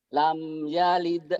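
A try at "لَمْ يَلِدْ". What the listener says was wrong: Lam, masih ketahan. Lam yalid. Lam yalid, jangan ditahan.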